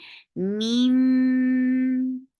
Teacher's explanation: Keep the sound in your nose for a longer time. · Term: iqlab